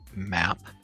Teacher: Keep your jaw up a little and open it just a bit. Let the air flow out through your nose since your mouth is closed. Your voice is on, so you should feel vibration in your throat. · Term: voiced sound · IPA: /m/